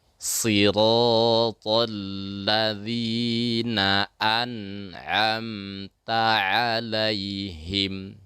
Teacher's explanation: Jadi jangan sampai nun itu seperti berqalqalah.